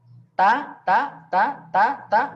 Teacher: ta itu sudah ada angin, sudah ada hamesnya secara ya secara natural, secara alami, tidak perlu dilebih-lebihkan atau tidak perlu dibuat-buat karena sudah ya kalau kita apa namanya